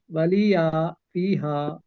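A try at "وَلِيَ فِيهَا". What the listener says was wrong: ولیہ چھوٹا رکھیں، ولیہ فیہا.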